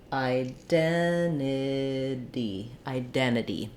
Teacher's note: Because we're dropping that first T, we would use a flap for the second T, so it sounds more like a D.